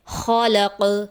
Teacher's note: وقف کی حالت میں قوف کی آواز پلٹ کر واپس آئے گی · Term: حرف قلقلہ